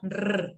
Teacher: El punto de articulación. ¿Dónde chocan? Chocan en el alvéolo, ¿no? Rrr, ahí chocan. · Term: alveolares